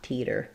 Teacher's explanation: Nice light flap sound. Not a strong D, just a flap